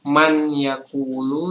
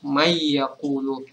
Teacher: Jadi ini cara membacanya itu kita melebur kata nun atau huruf nun ini dengan huruf ya setelahnya. Jadi bacanya bukan man yakulu tapi mayakulu. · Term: sukun idogam